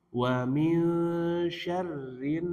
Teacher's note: Nunnya bertasydid, masuk dan didengungkan tahan. Wa min syarrin, ditahan dua harokat.